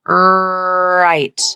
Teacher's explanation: bagian ujung lidah tidak menyentuh bagian alveolar dan tidak juga menyentuh bagian langit-langit mulut. Dan biasanya lidah dalam konsonan R atau dalam penyebutan konsonan R bentuk melengkung.